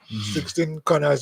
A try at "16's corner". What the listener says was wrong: Not 16's corners. It's 16's corner. Not 16 corners. Yeah, 16's corner.